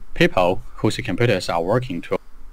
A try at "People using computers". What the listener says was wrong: I think you said using, but it sounded like whosing? Whosing. People using computers as working tools.